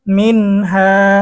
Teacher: নুন সাকিনের পরে ইজহারের হরফ হা এসেছে গুন্না ছাড়া পড়তে হবে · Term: নুন সাকিনের ইজহার